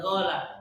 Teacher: Karena orang Yaman itu dialeknya huruf qaf itu go.